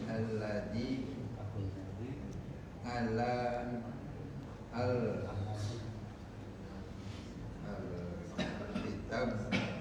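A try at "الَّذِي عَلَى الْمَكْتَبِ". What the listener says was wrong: bukan, ada mimnya itu Pak. Alal bi ya, karena ada ala, huruf jar ala. Hasil lanjut huwa bukan, itu bukan alif lam, itu 2 lam, lam sama lam. Itu bukan alif lam, tapi lamnya 2.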